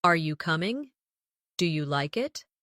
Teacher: Another important element is intonation when asking questions. In English, our voice usually rises at the end of a yes or no question.